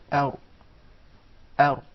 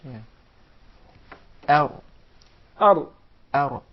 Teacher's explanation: You make sure that there is a slight striking, or the tip of the tongue would hit the gum to be pronounced properly, without rolling or the repetition of the Ra